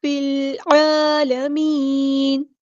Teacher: لام قمریہ ہے اور اس کو ہم نے ظاہر کرنا ہے، عین کو وسطی حلق یعنی مڈل تھروٹ سے ادا کرنا ہے ، اور عین پر حرکات مد آئی ہے تو ایک الف